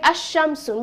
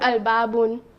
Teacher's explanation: the lam is not silent lam is pronounced